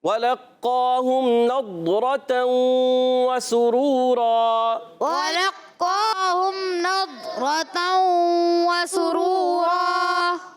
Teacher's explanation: اچھا سین پر پیش ہے، دیکھیں سین پر پیش ہے، آپ نے پیش پڑھنا ہے. یہاں پر نضرتوں میں ضاد کی ادائیگی کلیئر کریں گے اور کیا ہے اس کو باریک نہیں پڑھیں گے، موٹا پڑھیں گے اور کلکلا نہیں کریں گے.